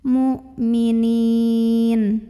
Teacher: Maka cara bacanya dipanjangkan nunnya 2, 4 atau 6 harokat. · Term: mad arid li sukun